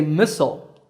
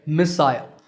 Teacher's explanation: But notice that the stress is on the first syllable in both.